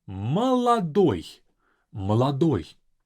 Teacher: The last letter is stressed, is going to sound as O, but all O's before that sound as A.